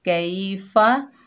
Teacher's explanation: या लीन है, इसको नरमी और जल्दी से अदा करेंगे। कई फ़ा के ऊपर ज़बर बगैर खींचे पढ़ेंगे फ़ा।